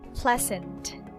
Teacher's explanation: pleasant so the stress is on the first syllable